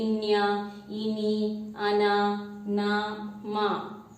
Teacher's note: Why when we pronounce these letters, no, this sound is coming through our nose and tongue together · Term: Anunasik Vyanjan